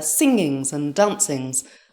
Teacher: singing and dancing with an emphasized g was not rp